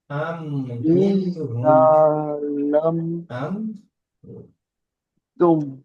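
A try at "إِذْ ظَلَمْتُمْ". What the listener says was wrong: জি, এটা ভালো করে উচ্চারণ করবেন, ঠিক বলেছেন, কিন্তু উচ্চারণগুলো আপনার গলত হচ্ছে, একটু ভুল হচ্ছে। জালাম নয়, নয়, ইজ জলাম তু, এটা যা নয়, এই যাটা বাদ, কিন্তু এটা জ, জ জ, জ জবর, জ জবর জ, আর যা, যা জবর যা, তাহলে এটা জ, ইজ জলাম তু।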